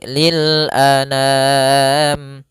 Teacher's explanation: Jangan dibaca dengan dengung atau dibaca dengan masuk hidung